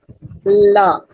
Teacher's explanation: The la sound, as in lead and light, is formed by letting the air flow around the sides of the tongue as the tip touches near the alveolar ridge. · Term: lateral sound